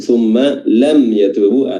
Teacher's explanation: Mimnya dibaca izhar, dibaca jelas, dan bertemu dengan huruf ya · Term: izhar syafawi